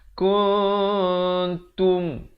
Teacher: disembunyikan bunyi nun di antara bunyi ta. Maksudnya nak kata nun pun tidak, nak kata ta pun tidak. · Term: ikhfa hakiki